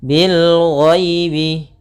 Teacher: ada ya sukun yang didahului dengan fathah, maka kita namakan dengan bacaan lin, lembut dalam pelafalannya